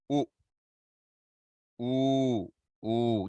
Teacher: just with length change, all non-nasalized. Then you nasalize them.